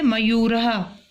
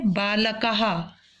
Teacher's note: ये विसर्ग जो विसर्ग लगे हैं इनका ह उच्चारण किया जाता है संस्कृत में